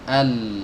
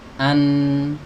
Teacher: Kalau nun itu ujung lidahnya saja. An itu nun. Kalau lam itu melibatkan bagian sisi lidahnya, pinggirnya.